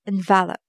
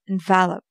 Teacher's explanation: The stress will be on the first part, envelope. And when we use it as a verb, it's envelope. The stress will be on the second part